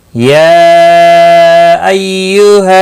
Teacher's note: یا مد منفصل ہے، 3 الف کے برابر کھینچ کر پڑھیں گے